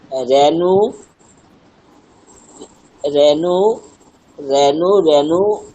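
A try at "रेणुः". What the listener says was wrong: উচ্চারণ ঠিক হচ্ছে না আপনার বিসর্গ কোথায় বিসর্গ উচ্চারণ করুন ঠিক করে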